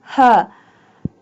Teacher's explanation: ha pronounced from the bottom part of the throat